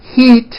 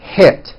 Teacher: think of the sound e as in heat as being high up and air as in hit is being a little bit lower · Think of the sound E as in heat as being high up, and I as in hit as being a little bit lower. One hint I could give you is when you're practicing, raise your eyebrows with E words like this, heat, and then lower your eyebrows and don't smile so much with I words like hit.